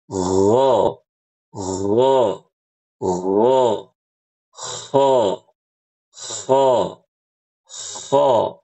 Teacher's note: Ya, begitu. Nah, huruf ghain dan huruf kha itu keluar ditempelin ke uvula tersebut. Makanya suaranya agak unik.